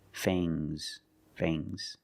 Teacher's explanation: And the S is making a zebra sound, Z, but it's soft.